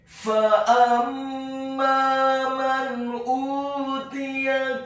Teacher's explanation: Fa'amma man utiya, huruf fa-nya dibaca fathah satu harokat, huruf alif atau hamzahnya dibaca tipis fathah satu harokat, huruf mimnya ditasydidkan dengan gunnah atau dengung seperti mat atau panjang dua harokat. Setelah huruf mimnya ditasydidkan kemudian fathah dua harokat karena setelahnya ada alif.